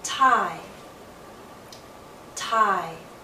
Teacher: We don't fully move into E with our lips fully spread, but we come close. Start in a more open position, ah, and then glide into E. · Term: diphthong